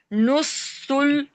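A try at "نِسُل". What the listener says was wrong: नुस नहीं है, निस था ना, फिर नुस बोला आपने।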